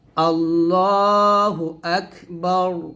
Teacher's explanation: রকে মোটা করতে হবে মানে রটাকে মোটা করে পড়তে হবে